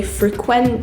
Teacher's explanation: or regularly but if you did it the other way and put the emphasis on the quent you'd say frequent that would mean that you're visiting somewhere and